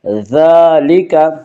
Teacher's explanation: من بعد ذالک، ذال کے اوپر کھڑا زبر ہے، کھڑا زبر قائم مقام ہے الف کے، اس لیے کھڑا زبر کو 1 الف کے برابر کھینچ کر پڑھیں گے۔